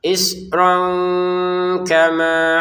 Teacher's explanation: Untuk ron bertemu kaf ini kita bacanya dengan samar.